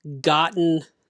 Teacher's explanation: those t's kind of disappear